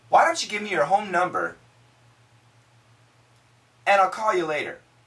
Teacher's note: the N cancels the D